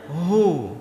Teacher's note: H besar keluar dari pangkal tenggorokan kita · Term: Hak besar